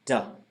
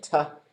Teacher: the D sound and the T sound are actually the same sound. What happens is your vocal cords turn on. So if we just took T-A, D-A, we go t, or ta, da, ta, da, ta, da.